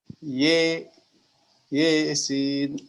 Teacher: jadi antara fathah dan kasrah atau bisa juga antara alif dan ya. Ya, jadi miring, bacaan miring. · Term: imalah